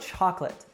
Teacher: the stress is on the first syllable chalk and the last syllable is unstressed